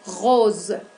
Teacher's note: debemos producir el sonido Z, ese que es similar al zumbido de la abeja